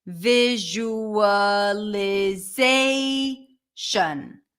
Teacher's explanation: In the word visualization, the stress shifts to zay.